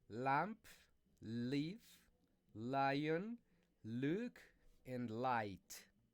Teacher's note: the L sound, is produced by touching the tip of the tongue to the ridge behind the upper front of the teeth